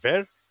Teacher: there was no doubt that it had extra high tone